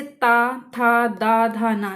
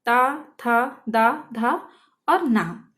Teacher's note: जब हम इन पांचों वर्गों को बोलते हैं, वर्णों को बोलते हैं, तो हमारी जो जीभ होती है वो हमारे दांतों से टकराती है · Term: दंतस्थ